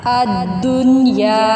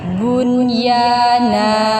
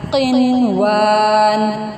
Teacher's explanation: ہم اس کو نون کو نہیں چھپا رہے یا اس کا ادغام نہیں کر رہے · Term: نون کا اظہار